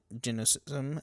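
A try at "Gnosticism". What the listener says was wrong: G is silent. Don't look at that.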